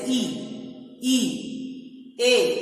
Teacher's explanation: हमारे जो ओंठ हैं वह गोल न होकर खुले हुए होते हैं, जिसे अबोली कहेंगे।